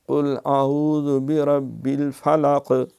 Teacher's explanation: قل اعوذ برب الفلق، فلق، اگر فلق بند کر دیا ہے سانس کو، آواز کو، تو گویا کہ آپ نے وہ قاف کو کھا گئے ہیں، اور وہ قاف کشش کتے والا جب وہ آپ نے پڑھ دیا۔ فلق قلقلہ ہے دو نقطے والے قاف میں